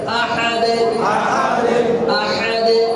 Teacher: আহাদ এমন না, আহাদে কিছুটা জেরের কাছাকাছি।